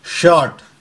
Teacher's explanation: for example शॉर्ट, तो मैं श बोल रहा हूं और फिर आ को खींच रहा हूं और र का कोई साउंड नहीं